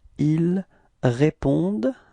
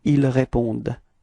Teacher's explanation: E-N-T is actually not pronounced, it's only répondent, okay, at the end it's the sound of the d